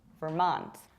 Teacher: We pronounce it like Vermont with a stress on the second syllable